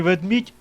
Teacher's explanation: два пом'якшених приголосних звук м пом'якшений звуком і